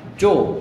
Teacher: উচ্চারণের সময় সেখানে অ ও এর মতো উচ্চারিত হচ্ছে, এখানে জ না হয়ে গেল কি জো, এই কারণে এখানে একটা ওকার চলে আসছে জো।